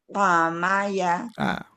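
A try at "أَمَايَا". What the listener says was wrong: Ainnya lebih lepas lagi, coba. Amaya.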